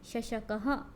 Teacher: फिर श, यदा मम उच्चारणं भवति तदा जिह्वयाः मध्यः तालुं किंचित स्पृशति, जब मेरा उच्चारण होता है तब जो जिह्वा है वह तालु के मध्य में थोड़ी सी स्पर्श करती है। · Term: तालव्यः